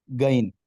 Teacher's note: یہاں کے رہنے والے لوگ غین کو گین پڑھتے ہیں، گین یعنی گاف کی آواز سے